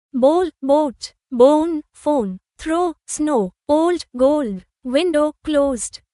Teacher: লক্ষ্য করুন এই শব্দগুলোতে মুখ গোল করে ও ধ্বনি বলতে হয়, যেমন হোপ, বোট, স্নো। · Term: ডিফথং ও সাউন্ড